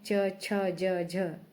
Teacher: उसके बाद च और छ, ये जो वर्ण है च, छ, ज, झ, इनका उच्चारण स्थान तालव्य है। तालु से जीवा स्पर्श करती है और झटके से आगे की ओर जाती है।